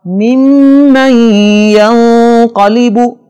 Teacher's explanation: یہاں دوسرے میم پر شد ہے، اس پر غنہ ہوگا · اور نون ساکن کے بعد ینمو میں سے یا آ رہا ہے، لہٰذا یہاں بھی نون کی آواز کو یا میں مکس کر کے غننے کے ساتھ پڑھیں گے